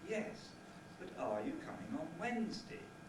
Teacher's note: the second time it is asked has a falling tone and that is a demand for information